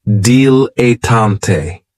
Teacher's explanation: this word has three syllables and there's kind of like a stress on that first and last syllable